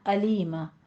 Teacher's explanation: अलीमा में आपने आइन की साउंड नहीं लानी है। हमजा है। अलीमा में अलीमा नहीं कहना, अलीमा।